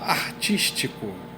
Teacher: A contagem vai até o is, que é a última sílaba tônica. O tico, ele só vai entrar para efeito de rima.